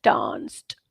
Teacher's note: So it's t, глухая t, voiceless, unvoiced.